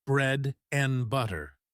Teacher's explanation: one of my favorites is when and becomes just N